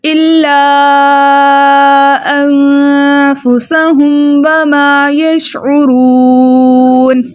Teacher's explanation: اچھا میم ساکن کے بعد بقیہ بچے 26 حروفوں میں سے واو آ رہا ہے تو اظہار شفوی کا قاعدہ ہو رہا ہے، یعنی ہم میم ساکن کو اس کے مخرج اور صفات کے ساتھ خوب ظاہر کر کے پڑھیں گے